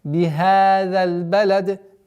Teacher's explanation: При остановке касра аннулируется и переходит в сукун, и у нас появляется калкала.